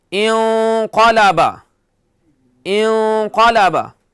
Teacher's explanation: नून साकिन के बाद क्या है क़ाफ, तो यहां नून को मोटा करना है